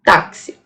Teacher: Eu tenho uma letra, o X, mas tenho como representação sonora dois fonemas, um K e um S